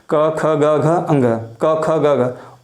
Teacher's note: क, ख, ग, घ, अंग का उच्चारण स्थान कंठ है